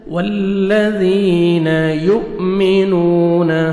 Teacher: حمزہ جزم جھٹکے سے پڑھیں گے، واو مد ہے، نون کو آپ نے 1 سیکنڈ کھینچنا ہے